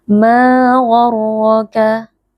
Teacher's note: Mad tabi'i karena ada alif yang sebelumnya berharokat fathah, dibaca panjang 2